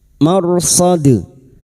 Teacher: Huruf dal yang mati karena waqaf. Qalqalah kubro. Jangan lupa dipantulkan. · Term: qalqalah kubra